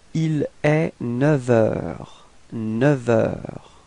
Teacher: Okay, and so with the liaison, so you can see that the liaison is coming between 9 and heure, and actually it's quite tricky in this case because we will change the sound, so we won't pronounce the F, but it would sound a bit more like V, like a V. Okay, so if you make the liaison, it would sound like il est 9 heures.